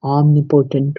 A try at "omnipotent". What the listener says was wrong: No, omnipotent. Omnipotent. It's on the second syllable. Omnipotent.